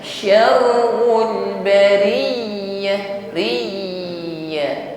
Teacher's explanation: karena ya sifatnya layinah dan rakhawah bunyi hurufnya tetap ngalir